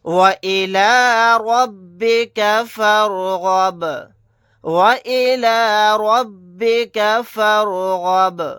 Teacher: یہاں پر رائے ساکنہ کو موٹا پڑھیں گے کیونکہ رائے ساکنہ سے پہلے زبر ہے